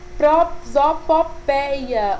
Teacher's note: prosopopeia, ela tem um ditongo aberto, que é a junção das duas vogais, E e I